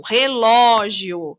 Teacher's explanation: no caso da palavra relógio ó é a sílaba mais forte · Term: sílaba tônica